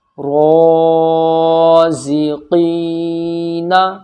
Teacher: جتنا یہاں پر را کھینچے گا اتنا ہی قاف کھینچے گا